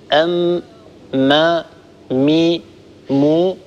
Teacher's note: الميم كما مر معنا في مخارج الحروف تخرج بانطباق الشفتين على بعضهما، ويصاحب ذلك غنة من الخيشوم، نقول أم ما مي مو، فالميم تخرج بانطباق الشفة العليا على الشفة السفلى، بانطباق الشفتين على بعضهما، ويصاحب هذا الانطباق غنة من الخيشوم.